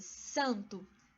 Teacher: a função do n nada mais é do que ele indicar vogal que é nasal Ou seja que é pronunciada pelo nariz